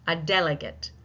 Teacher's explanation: Where is this? Where is the primary stress? On the first syllable.